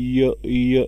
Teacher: म्हणजे तुमच्या जिभेच्या कडा उचलून टाळूकडे गेलेल्या आहेत म्हणजे तालाव्य येणारच आहे